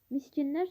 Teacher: Sözün yalnız şəkilçisi fərqli tələffüz olunur. Miskinlər sözündə k samiti g kimi tələffüz olunur.